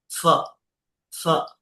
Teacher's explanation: উপরের দাত নিচের ঠোটের মাঝখানে